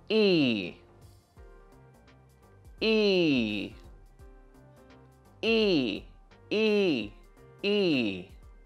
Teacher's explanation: For the sound /iː/, we need to almost close our mouths, and make our lips and tongue wide. This is usually a long sound.